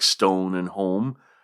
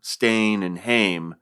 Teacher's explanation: southern versions used an O sound for words like stone and home, but elsewhere they sounded more like an A sound, stain and hame, kind of Scottish sounding, which shouldn't surprise.